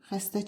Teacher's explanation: Samitlərin üçü də kardır.